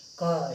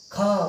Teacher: जैसे क का उच्चारण करते हैं, इसमें हमें वायु कम निकलती है। ख का उच्चारण करते हैं तो हमको जोर पड़ता है, इसमें वायु बने अंदर से जो वायु निकलती है ज़्यादा निकलती है। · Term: अल्पप्राण